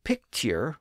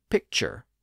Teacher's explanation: the word picture with its T sound became picture with its modern CH sound